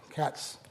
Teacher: cats there's a hissing sound, but there's no voicing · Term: S sound